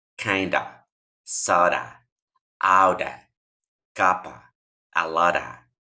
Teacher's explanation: Cuando las pronuncien juntas, este of se va a convertir en una A, como una schwa. No es una A abierta como la que tenemos en español, pero es el sonido de la schwa.